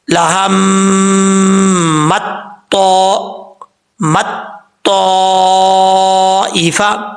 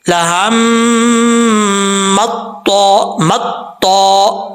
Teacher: پہلے تا کو باریک پڑھنا ہے، پھر تو کو جب لمبا کریں گے تب تو کو موٹا پڑھا جائے گا